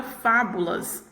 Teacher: a sílaba tônica da palavra fábula é a sílaba fá, né? Que ela está sendo pronunciada aí com maior intensidade. E ela está na posição antepenúltima.